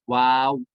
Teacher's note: میں کیا ہوگا، واو میں دونوں ہونٹ کی گولائی ہوگی، واو، دونوں ہونٹ کھلیں گے اور گول ہو جائیں گے، راؤنڈ ہو جائیں گے